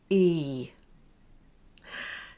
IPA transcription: iː